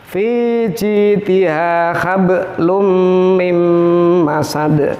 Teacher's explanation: Nah ini qalqalah, huruf qalqalah ba dibaca sukun kemudian diwasolkan. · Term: qalqalah yang ringan